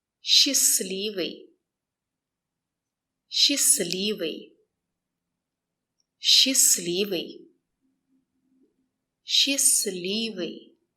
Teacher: The stress is on ливый.